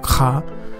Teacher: It's a hard guttural sound. It comes from the back of your throat